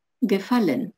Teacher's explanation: ударение на корень слова